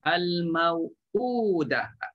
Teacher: Kalau badal muhaqqaq itu ialah maknanya bunyi atau sebutan yang kita sebut a, i, u tu dia memang tepat pada makhraj hamzah itu di pangkal halqum, dia tak berubah